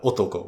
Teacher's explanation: you'll have otoko, which would go high, low, low, otoko. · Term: pitch accent